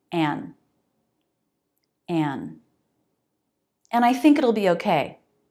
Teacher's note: And. The first reduction is just dropping the D.